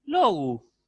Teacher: Un poquito más agudo suena el acento.